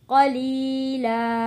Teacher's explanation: قاف کو موٹا پڑھیں گے